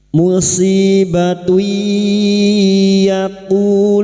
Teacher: Masuk dengan mendengung. Masuk pada huruf ya dan mendengung selama tiga harakat. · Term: idgham bighunah